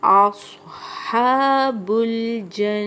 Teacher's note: نون پہ شد آ گئی اس لیے ہم غنہ کر رہے ہیں